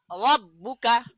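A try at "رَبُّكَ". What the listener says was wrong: এখানে রটা মোটা হবে, মোটা করে রাব্বুকা।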